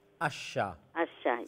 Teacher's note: you can actually feel the middle part of the tongue is touching the middle palate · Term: Shin